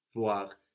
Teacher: we have the oi combination in voir, giving us wa.